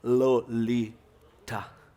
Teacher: A ponta da língua descendo em 3 saltos pelo céu da boca, até tropeçar de leve no terceiro, contra os dentes.